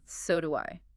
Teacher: you really hit the do and let your pitch drop